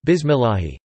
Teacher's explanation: he should not pronounce the Lām with a heavy emphasis – instead, just with the tip of the tongue